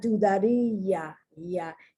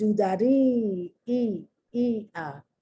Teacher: that I is pronounced like a strong I, E. It's not pronounced like a weak I, E, like a Y, E.